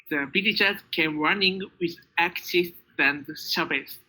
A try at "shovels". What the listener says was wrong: Shovels. Very good.